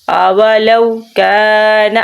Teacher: یہ کاف جو ہے بریک کاف ہے، یہ موٹا قلقلے والا کاف نہیں ہے